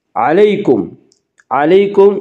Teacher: یالین کو نرم آواز کے ساتھ جلدی پڑھیں گی